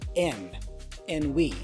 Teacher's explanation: the D for and is dropped, so we hear N and we